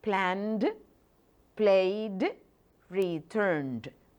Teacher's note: So you need to pronounce it like that, with a D, with the voiced sounds, because the preceding consonants are also voiced.